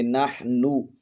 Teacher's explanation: حا کو حلق کے درمیانی حصے سے ادا کریں گے